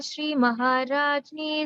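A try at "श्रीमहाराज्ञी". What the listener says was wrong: So here, we don't say Jni here. it's Shri Maharagni, Srimad-Simhasaneshwari, and the Chidagni Kunda Sambhuta Dirgha, and then Deva-karya Samudyata.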